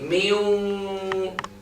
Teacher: the noon has been gone completely by the waw, and the trace of gunna, the voice coming from noise, is left there. This is for sure from the noon, because waw doesn't have gunna.